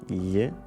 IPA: ʎ